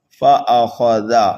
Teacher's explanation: خا کو پر پڑھنا ہے، زال کو نرمی سے پڑھنا ہے